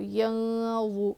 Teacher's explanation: اس کے بعد حمزہ پہ زبر ہے نہیں کھینچیں گے، فا پہ زبر ہے نہیں کھینچیں گے، لام الف زبر لا، الف مدہ ایک الف کے برابر کھینچیں گے، یا نون زبر ین، حروف اخفا میں سے ہے غا، نون ساکن کے بعد حروف اخفا آیا ہے تو یہاں پہ کیا کریں گے، نون کی آواز کو ناک میں چھپا کر پڑھیں گے. غا حروف مستعلیہ میں سے، اور دو کا مخرج ہلکا پڑھنا ہے اور موٹا پڑھیں گے غا کو.